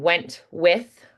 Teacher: I don't have to be as crisp on the T because there's that consonant in the front of the next word.